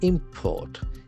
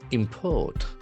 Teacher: If it is a noun, the accent falls on the first syllable. Import. If it is a verb, you can find that the accent shifts to second syllable.